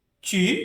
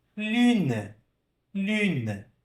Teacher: Perceba que no U a gente faz o bico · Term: biquinho